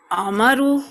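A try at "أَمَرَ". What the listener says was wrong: امارا امارا. یہ جو زبر ہے نا، اس کو نہیں کسی صورت نہیں بدلنا. ٹھیک ہے، یہ بہت اہم چیز ہے، اس کو بدلنا ہی نہیں ہے. امارا.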